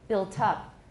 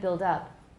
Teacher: So when the second syllable is stressed, very often we don't get a tap, we just get an aspirated T. It's not always the case.